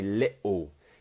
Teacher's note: we do that glottal T where it's like coughing in your throat